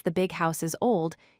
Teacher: in the sentence the big house is old, you stress the word big because it describes the main noun, house. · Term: stressing adjectives